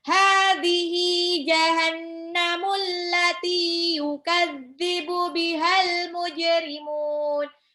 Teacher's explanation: Yukadzibu bihal mujrimun, al mujrimuna, alif lam komariah, jimnya itu pantul ya, jimnya pantul, kol-kola dipantulkan. Muna, mimnya 2 harokat, ketemu sama nun, hidup tapi di akhir ayat, jadinya mujrimun, dimatiin nunnya. · Hadhihi, haknya 2 harokat, sama-sama 2 harokat itu mad tabi'i. Jahannamu, nunnya tasjid, itu sifatnya gunnah, jadi tahan 2-3 harokat.